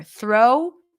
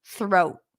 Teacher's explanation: it's also shorter when it ends with a T the vowel is shorter